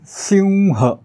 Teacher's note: अनुस्वाराच्या समोर ह आला म्हणून अनुस्वाराच्या ऐवजी अनुनासिक व टाकायचं आहे. उच्चार होईल सिंह.